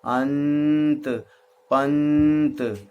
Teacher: जिस ध्वनि के उच्चारण में नाक से अधिक हवा निकले, मुंह से कम, मुंह बंद हो जाए और नाक से अधिक हवा निकले, तो उसे अनुस्वार कहते हैं, जहां बिंदी लगी होती है।